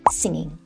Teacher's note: No need to push the G, just singing. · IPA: /ˈsɪŋGɪŋ/